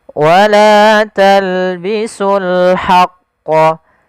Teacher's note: Di sini alif lam qamarah. Yaitu alif lam kita tulis dan kita baca dengan jelas suara lamnya